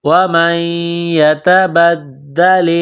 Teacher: ومن نون ساکن کے بعد یا ہے، یا مشدد ہے تو نون ساکن پر غنہ کریں گے، آواز ناک میں چھپائیں گے · تا کو باریک کرنا ہے، نقطوں والی تا ہے۔ دال مشدد ہے تو دال میں سختی کرنی ہے، دال کو دبانا ہے۔